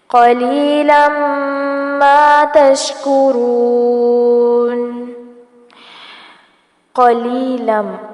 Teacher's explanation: قاف کو پر کیا جائے گا، جبکہ آگے ادغام مع الغنہ ہوگا، تنوین کے بعد میم آ رہی ہے